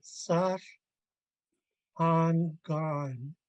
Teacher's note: um, First of all, I wasn't paying attention to the tone mark up front, sash. I was just speaking low tone all the way across.